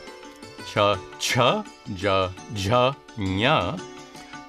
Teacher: the palatals at the hard palate